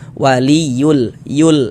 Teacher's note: Lamnya lam qamariah. Maksudnya dibaca izhar itu dia huruf lam-nya dibaca jelas. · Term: Izhar qamari